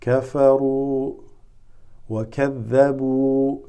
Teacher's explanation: they just make the ra with the dhamma longer